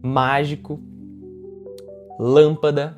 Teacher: São palavras que a sílaba mais forte está na antepenúltima. Veja que contando de trás para frente, né, da última sílaba para a antepenúltima, são palavras com 3 sílabas ou mais, e a mais forte é sempre essa antepenúltima, são as proparoxítonas.